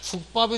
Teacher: 그래서 대표적인 한 예를 여기다 쓰게 되면 국이라는 말이 있죠. 국에다가 밥이 만났을 때 이때 기역도 안 울림, 뒤에 비읍도 안 울림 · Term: 된소리